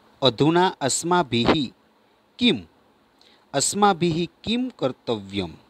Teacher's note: સહેજ હ જેવો થાય। આ વિસર્ગનો ઉચ્ચારણ કેવો? સહેજ હ વર્ણના જેવો થાય છે